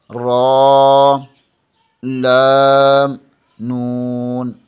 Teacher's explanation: زبان کے کنارے کی پشت اوپر والے دانتوں کے مسوڑوں سے لگے تو را، لام، نون ادا ہوتے ہیں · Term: مخارج نمبر 9